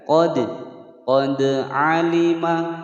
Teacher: Qad, dal sukun, huruf qalqalah dipantulkan. Qad, qad alima, pendek semua.